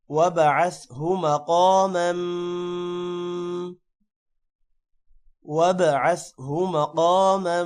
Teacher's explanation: آتی محمدن الوسیلت، آتی محمدن الوسیلت والفضیلہ، والفضیلہ ضاد موٹا ہوگا اور ضاد کے بعد یا ہے، تھوڑا سا لمبا کریں گے، والفضیلہ وبعثہ مقاما، وبعثہ با پر قلقلہ کریں گے، مقاما قاف کو موٹا کریں گے، قاف کے بعد الف ہے، تھوڑا سا لمبا بھی کریں گے، اور میم پر غنہ ہوگا۔